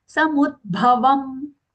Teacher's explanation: Take half the as aghatanmu. And then when we say bhavam, the bha mahaprana